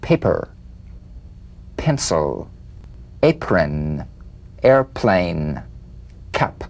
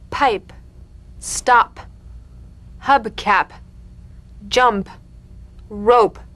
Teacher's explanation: The whispered tap of this drumbeat P is played with a light springing apart of the lips, just like for the B.